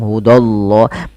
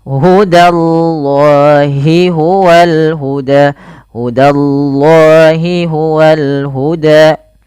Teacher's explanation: tapi da tipis Allahnya tebal